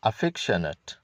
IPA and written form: əˈfɛkʃənət (affectionate)